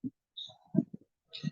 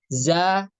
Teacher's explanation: untuk pergerakan pangkal lidahnya itu istifal atau turun